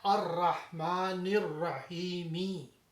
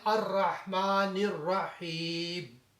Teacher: جب ہم یہاں پہ سٹاپ کرتے ہیں تو ہم میم کو ساکن بناتے ہیں، تو پھر کہتے ہیں الرحمن الرحیم. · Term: مد عارف وقفی